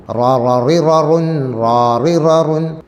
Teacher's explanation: മലയാളത്തിലുള്ളതുപോലെ റാ എന്നത് അറബിയിൽ ചില സന്ദർഭങ്ങളിൽ മാത്രം വരുന്നതാണ്. അറബിയിലെ ഒറിജിനൽ റാഇൻ്റെ ഉച്ചാരണം വായ നിറയെ ശബ്ദമുണ്ടാകുന്ന വിധത്തിലാണ്. അത് വരണമെങ്കിൽ നാവിൻ്റെ തലയുടെ മുതുക് മേലെ മുൻപല്ലിൻ്റെ ഊനിൽ തട്ടേണ്ടതുണ്ട്.